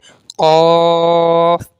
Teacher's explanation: जबान की जड़ जो है वो तालू के नरम हिस्से से लगेगी और फिर ये कफ अदा होगा · बारीक काफ के मुकाबले में इसे थोड़ा मोटा कर लें और आवाज थोड़ी साउंड में आपकी भारी होनी चाहिए